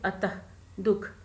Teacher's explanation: विसर्ग, इसका उच्चारण ह की तरह होता है, जैसे अतः, दुख इत्यादि।